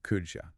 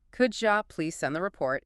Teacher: When the D sound at the end of could meets the Y sound at the beginning of you, they physically blend together in the mouth to create a J sound. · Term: connected speech